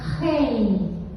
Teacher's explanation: Eu tenho o R, que é o aclive, eu tenho o E, que é a vogal núcleo, e eu tenho o I, semivogal, rei. Acabou a sílaba, não junta com nada. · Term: sílaba completa